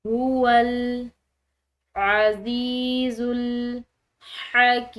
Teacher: هو ہا موٹی یعنی کہ جو ہمارے سینے سے ادا ہونے والی ہا ہے